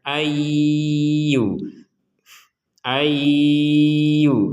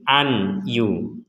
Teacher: ketika ay maka di rongga hidung kita itu berdengung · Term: dengungan